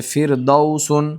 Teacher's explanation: را ساکن سے پہلے زیر اصلی را باریک ہوگی